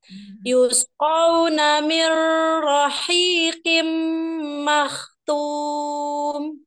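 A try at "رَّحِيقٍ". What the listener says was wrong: Tadi Umi huruf ro-nya jangan seperti cadel. Mirrohi. Jadi tahan dulu. Mirrohi kimmahtum.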